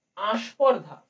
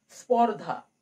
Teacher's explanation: শুরু থেকে বা আদি থেকে স্বরধ্বনি চলে গেল, তাই এটিও হবে আদি স্বরলোপ।